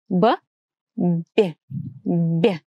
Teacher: When we pronounce soft B, the lips are pressed more towards the teeth if we compare it to the pronunciation of the hard B sound. B, B, B. So the lips are pressed stronger.